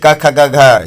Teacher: क ख ग घ, ये कंठ से बोले जाते हैं।